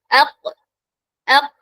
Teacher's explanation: കോഫ് പറയുമ്പോൾ സോഫ്റ്റ് പാലറ്റിൽ മാത്രമാണ് ടച്ച് ചെയ്യുന്നത്